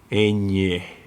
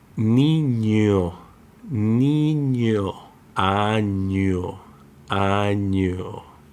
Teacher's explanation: It's similar to the English ny, like in canyon, but it's more nasal.